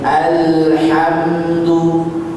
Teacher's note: al dan am tahan dulu sebentar karena ada sifat bainiyah